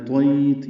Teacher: یا لین تا پہ وقف کر دیں گے، ہمس ہوگا. وقنی شر ما قضیت، وقینی قاف پر پڑھیں گے، نی یا مدہ، شر را پر، ما الف مدہ، دو حرکات لمبا.